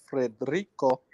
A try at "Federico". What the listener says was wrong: Federico. Federico. Not rico. Federico. Don't roll.